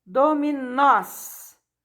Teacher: Nós é a palavra mais forte, né? É oxítona, terminada em O, seguidos de S.